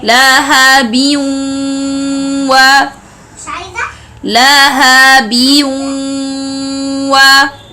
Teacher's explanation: the sound of this noon will be merged with the sound of a wow. So it will be lahabiyun wa, lahabiyun wa.